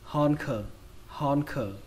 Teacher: Âm đầu tiên các bạn đọc là hòn. Âm thứ hai xuống giọng khờ · trọng âm của từ này rơi vào âm đầu tiên, âm hòn, hòn. Âm thứ hai các bạn đọc là âm khờ.